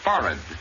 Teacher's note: Accent definitely on the first syllable, and the H is not pronounced.